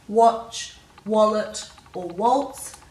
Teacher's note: Now you'll know in these words that there's no H after the W, because if you say watch, wallet, or waltz, there's no air after the W, so we know there's no H.